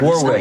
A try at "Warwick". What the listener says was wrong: It's not. All at once. Warwick. No, forget the W. Not the first W, the middle one. Warwick.